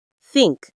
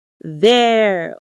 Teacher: Think and through are voiceless. There and that are voiced.